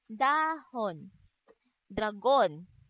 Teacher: Ang letrang D naman ay may tunog na isinasaad sa paraan ng pasara at sa punto ng pangipin.